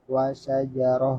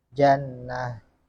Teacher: Terus catatan a tanwin nasab tidak diganti alif apabila tanwin berada di atas ha tait. tanwin dibuang dan diwakaf dengan ha tan sukun. Contoh wasajarah wasyajaratan diwakafkan menjadi wasyajarah.